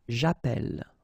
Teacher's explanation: Okay, and then it's quite interesting, because as we saw in the previous video, if you have double L like that, it will affect the pronunciation of the E. So actually it will open the sound, and that's the reason why you will get the sound E, okay?